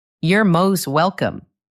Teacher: the T sound at the end of most can become very soft. Sometimes it almost disappears. It can sound like, "You're most welcome." This is a very small detail, but listening for these little things can help you understand natural speech better.